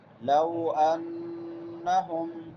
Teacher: یَأْتِلْ احزاب یودوا لو انہم لو واو لین ہے، واو ساکن ما قبل فتحہ ہے. لو انہم ان نون مشدد ہے، یہاں پہ غنہ ہوگا